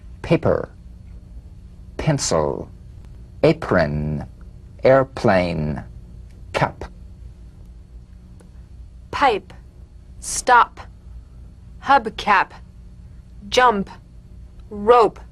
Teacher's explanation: unvoiced labial stop consonant the whispered tap of this drum beat p is played with a light springing apart of the lips just like for the bee on the springing away feel a bee in a whisper without